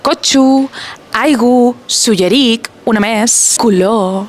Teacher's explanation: la vall de Sóller és l'únic lloc de tota la illa on tanquen la O àtona i la fan U.